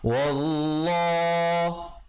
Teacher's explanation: Kemudian kalau pilih untuk waqaf terus ibtida pada wallah. Lafzul jalalah datang baris fathah sebelumnya dibaca tebal 2 harakat.